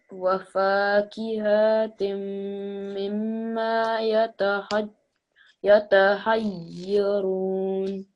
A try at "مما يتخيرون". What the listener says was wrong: Okay, so again, really try and get that kha from your throat. يتخيرون.